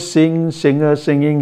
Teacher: the velar nasal in this case is predictable on account of assimilation